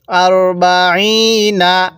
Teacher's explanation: আরবাইনা আইনের মধ্যে আমরা এক আলিফ টান দিব